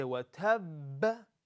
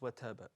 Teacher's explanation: The first qalqala is a bit stronger than all the other qalqalas, is because this qalqala has a shadda. So we say watab, not just wataba, okay?